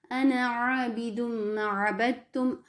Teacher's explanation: نون زبر کے ساتھ پڑھیں گے، الف مدہ کے ساتھ نہیں پڑھیں گے۔ انا نہیں پڑھیں گے۔